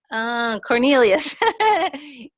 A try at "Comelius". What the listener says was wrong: Comelius. No R. And it's with an M. Yeah, Comelius, not